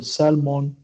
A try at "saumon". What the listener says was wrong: saumon, saumon. saumon. Ça s'écrit comme ça parce que en français, il n'y a pas de lettre L dans le mot saumon, donc on prononce ce mot saumon.